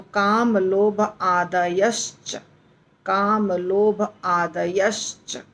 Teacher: तो आदयः से विसर्ग चला गया और श आधा श आ गया, तो काम लोभ आदयश्च, काम लोभ आदयश्च ऐसा हो जाएगा।